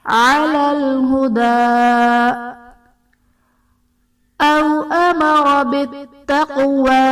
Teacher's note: او میں واو ساکن سے پہلے حرف پر زبر ہے، واو لین کا قاعدہ ہے، یہاں پر ہم نے بغیر کھینچے بغیر جھٹکا دیا نرمی سے معروف پڑھنا ہے